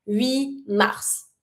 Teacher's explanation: So it's fine to skip the T so that you have just one consonant to pronounce, which is the first letter of the following word.